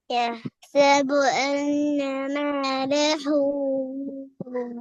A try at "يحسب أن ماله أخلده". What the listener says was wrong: ஹூ அல்ல, பெரிய ஹா. يحسب أن ماله أخلده. பெரிய ஹா வரணும். أخلده. பெரிய ஹாட சவுண்ட் வருது இல்ல? இப்படி போல வரப்படாது. இப்படி போல வந்தா பிரச்சனை.